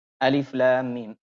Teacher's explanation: Alif tidak punya hukum mad dia, kemudian lam 6 harokat, lalu ada gunnahnya, lam karena mim ketemu mim tadi, lalu mim 6 harokat · Dilafalkan nama hurufnya. Harfi musyba, baik musaqqal ataupun yang mukhaffaf, wajib 6 harokat panjangnya. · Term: mad lazim